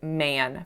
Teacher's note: this is a nasalized a sound